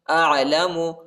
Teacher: عین کو وسط حلق میں پڑھنا ہے، یعنی گلے کی درمیانی حصے میں پڑھنا ہے